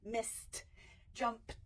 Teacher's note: It's going to say the T at the end for a voiceless where you're not using your voice box.